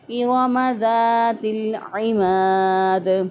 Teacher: لام ساکن ہے تو لام پر آواز کو بند کر کے پھر ہم نے عین کو ادا کرنا ہے · عین جو ہے یہ وسط حلق سے اس کو ادا کریں گے۔